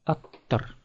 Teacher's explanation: Оканчивается на глухое согласное т, следовательно, примыкает к нему аффикс с глухим же согласным.